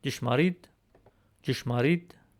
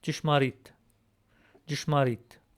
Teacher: instead of a D in Western Armenian, we used an unaspirated T in Eastern Armenian